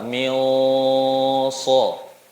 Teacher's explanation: Sod huruf tebal, maka nun sukunya sifatnya ikut tebal. Mil so. Jadi sesuai dengan sifat huruf yang ada di depannya.